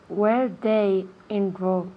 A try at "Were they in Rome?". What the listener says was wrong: Day is día. They.